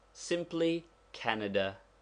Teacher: Take the word Canada. There is a slight stress upon the first syllable but not enough to make it a long vowel.